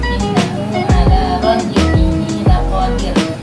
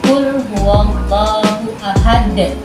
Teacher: Pantulannya tidak terlalu terdengar seperti qalqalah kubra. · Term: qalqalah sugra